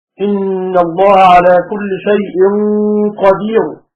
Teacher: وحال الروم تكون الراء مفخمة.